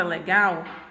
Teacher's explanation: observa que a última sílaba é a sílaba gal, ela é minha sílaba tônica. Por quê? Porque essa sílaba aqui eu pronuncio ela com mais intensidade.